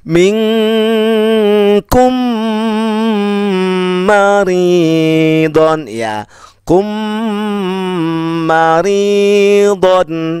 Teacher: Ingat rumusnya, jika mim sukun yang diingat adalah huruf yang dengung, yaitu mim bertemu ba, mim bertemu mim. Di sini mim sukun bertemu mim, maka dibaca dengung.